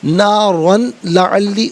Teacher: یرملون میں سے کوئی بھی حرف آ جائے اس کے ساتھ ملا کر پڑھتے ہیں، تو یہاں پر لام کی آواز کو ادا کیا جائے گا